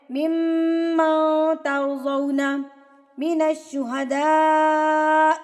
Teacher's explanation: نون ساکن کے بعد تا آ گیا، اٹ مینز یہاں پر اخفا ہو رہا ہے